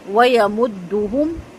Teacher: مدہم تمام پیش ہونٹ مکمل گول کر کے پڑھے جائیں گے، اتنے گول ہوں کہ آپ کے جو سب سے چھوٹی انگلی ہے نا اگر وہ بھی آپ اپنے ہونٹوں کے اندر انٹر کرنا چاہیں تو وہ ایزیلی نہ ہو سکے، ٹھیک ہے، اس کو شیشے میں دیکھ کے پیش کی پریکٹس کیجیے گا۔